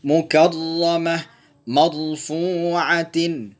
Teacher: Ra bertasydid, tebalkan dalam harokat fathah.